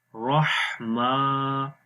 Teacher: ہا کی آواز گلے کے درمیان والے حصے سے آئے گی